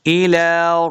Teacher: लम के ऊपर खड़ी ज़बर है, इसको दो हरकत लंबा करके पढ़ना है।